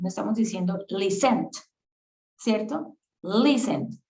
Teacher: El acento ya se hace en la primera parte.